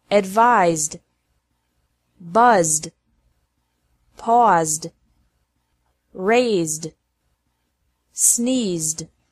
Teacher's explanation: e d is pronounced like d after verbs ending with a z sound